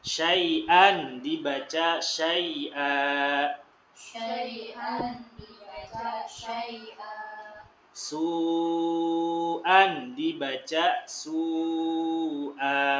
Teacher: Hamzah berbaris fathah tain juz'an. Kalau waqaf dibaca jadi 2 harokat.